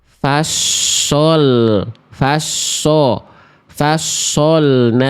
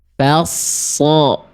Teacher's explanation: enggak ada monyong-monyong di antara kita, tapi bunyi huruf tebalnya vokalnya tetap kerasa lebih gemuk